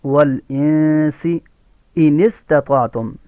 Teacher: سین حروف صفیریہ میں سے ہے تو سین میں سیٹی کی سی آواز دے کے پڑھیں گے